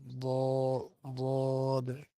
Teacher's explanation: জিহ্বার গোড়ার কিনারা উপরের মারি দাঁতের গোড়ার সঙ্গে লাগাইয়া বুঝতে পারছেন দদ উচ্চারিত হয়।